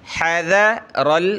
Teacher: रा आगे लाम से प्लस होगा